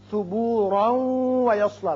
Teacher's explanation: یہ وقت جب کیا تو ثبورا پڑھا، لیکن اگر ملانا چاہیں اس آیت کو اگلی آیت سے تو پھر را کی تنوین واو سے ملے گی، ادغام غنے کے ساتھ ہوگا